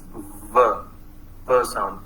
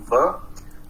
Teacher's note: Then there is another labiodental sound, that is v sound. It is an approximate sound, v.